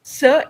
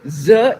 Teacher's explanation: Th is voiceless, D is voiced. S is voiceless, Z is voiced.